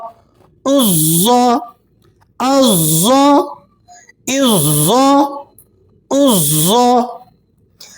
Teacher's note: عین کو آپ نے ذرا مخرج سے اس کے اور ذرا زور لگا کر درمیان حلق سے ادا کرنا ہے